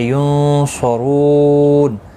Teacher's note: نون ساکن کے بعد حروف اخفا قصاد آئے، اخفا حقیقی ہوگا، گنہ کے ساتھ پڑھیں گے